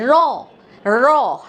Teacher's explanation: আর একটা ধ্বনি হলো কম্পিত ধ্বনি, র। র, রটা উচ্চারণ করার সময় আমাদের একটু কেঁপে যায় জিহ্বা।